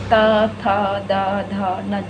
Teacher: फिर है दंत, यानी ये वाले ये तावर्ग कहलाते हैं, और जब हम बोलेंगे तो ये हमारे दांतों से स्पर्श करते हुए निकलेंगे